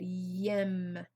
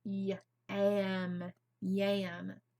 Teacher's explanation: Which letter do I need to change? I'm going to change this medial vowel from an eh to an ah.